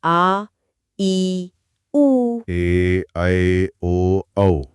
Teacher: दीर्घ मतलब बड़ा, जिन्हें बोलने में ह्रस्व से दुगना समय लगे, जैसे आ, ई, उ।